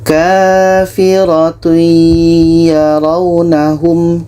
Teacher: tanwin kita masukkan ke ya dan diiringi dengan dengung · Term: Idam bunah, idgham bi gunnah